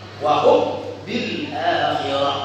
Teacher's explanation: mim mati ketemu ba, mimnya dimasukin ke huruf ba. Ketika mimnya dimasukkan ke huruf ba, maka dia akan berat dibaca idgham. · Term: idgham murni